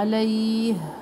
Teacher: ہا کی آواز سینے کی طرف سے آتی ہے اور سختی بھی ہے اس میں.